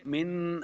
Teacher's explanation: منہ پہ غنہ نہیں کریں گے، من یہاں ایسا کریں گے، من اگر ناک میں آواز گئی تو یہ غلطی ہو جائے گی، غنہ نہیں کرنا